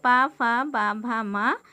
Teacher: इनके उच्चारण में दोनों ओष्ठों द्वारा श्वास का अवरोध होता है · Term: ओष्ठ व्यंजन